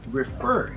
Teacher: You see, in the IPA, the stress is located on the second syllable, not on the first one. So this should be read as refer, not refer.